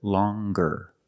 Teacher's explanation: we have the hard G sound longer with a nasal sound plus the hard G